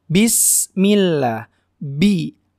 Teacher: pengucapan huruf ba harus jelas harus jelas tidak ada desah nafas yang keluar karena hurufba ini mempunyai sifat jajar bismillah by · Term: sifat jahr